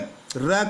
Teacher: जिस व्यंजन के उच्चारण में जीवा की नोक वायु की रगड़ खाकर कांपती रहती है उसे प्रकंपित व्यंजन कहते हैं। यानी जब हम इन र का उच्चारण करते हैं तो हमारी जो जीवा है उस जीवा की नोक वायु से रगड़ खा के कांपती है, ऐसा प्रतीत होता है, तो इसको हम प्रकंपित यानी कंपन सा करती हुई जीव के रूप में हम जानते हैं।